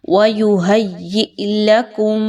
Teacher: Word ہے یہ کیا ہے؟ وَيُهَيِّئْ لَكُمْ، اب یہاں پہ بھی حمزہ ساکن کے ساتھ جزم کے ساتھ آ رہا ہے، آپ نے اس حمزہ کو بھی جھٹکا دیے بغیر نہیں پڑھنا